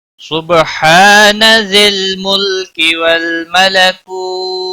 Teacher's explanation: ہا الف مدہ ہے، ایک الف کے برابر کھینچ کر پڑھیں گے